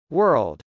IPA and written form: wˈɝld (world)